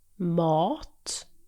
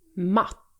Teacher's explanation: The vowel sound in mat is stretched out, while in matt, it's much shorter and quicker.